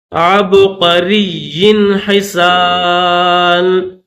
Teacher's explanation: عبقری یا کے اوپر کیونکہ تشدید ہے تو یا کو سختی کے ساتھ پڑھیں گے